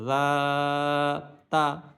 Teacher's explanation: জাল হরফটা আবার নরম করে উচ্চারণ করবো, জিহ্বার আগা সামনের উপর, দুই দাঁতের আগার সাথে লাগে, জা তা, তা জবর তা।